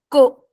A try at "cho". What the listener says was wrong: Cho. CH, C'est cho. Che. Donc, le chapeau, c'est cho. Ce n'est pas ko.